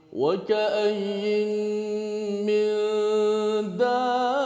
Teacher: Okey, kemudian bertemu dengan mim, maka huruf mim, huruf nun tersebut dimasukkan ke dalam huruf mim. Maka berlakulah idgham.